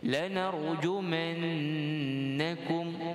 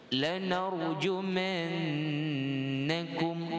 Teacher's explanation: Yang dengung pada nun syaddah.